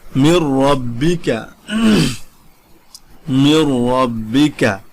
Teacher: দেখুন যেমন মির রব্বিকা, মির রব্বিকা, ঠিক আছে, এখানে দেখুন নুন সাকিনের পরে র এসেছে এবং রর উপরে তাজদিদ আসছে, কিন্তু এখানে আপনি মির রব্বিকা ডাইরেক্ট মিমের সাথে র কে মিলিয়ে ফেলবেন, এখানে কোনো গুন্না হবে না। মির রব্বিকা যদি বলেন অশুদ্ধ হবে।